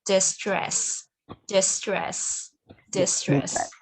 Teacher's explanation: Dis. Xuống giọng nè. Stress hơi lên một xíu, hơi ngang một xíu.